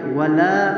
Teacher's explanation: یہاں پر ولا میں جو الف ہے اس کو باریک پڑھیں گے